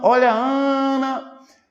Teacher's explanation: não demora mais tempo na última sílaba demora mais tempo na penúltima sílaba